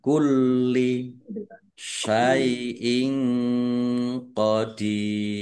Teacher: Mat tobi'i dibaca panjang 2 harokat. Kulli, lamnya dibaca double, ya. Biar tampak doublenya maka ditekan. · Kasrah tanwin bertemu dengan huruf qaf, bacaan ikhfa, dibaca samar-samar